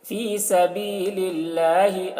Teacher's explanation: اللہ کے لام کو باریک پڑھیں گے کیونکہ اللہ کے لام سے پہلے زیر ہے